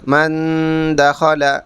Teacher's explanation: دال آ رہا ہے تو یہاں ناک میں آواز چھپا کر پڑھیں گے گننے کے ساتھ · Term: اخفا